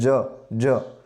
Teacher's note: જે જ છે એ ગળામાંથી નથી નીકળતો પણ આપણું જે તાળવું છે ત્યાંથી બોલાય છે જ જ તો એ તાલવ્ય તરીકે ઓળખાય છે તો આ રીતે